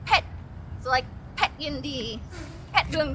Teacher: anytime there's a pet it's sharp and it's high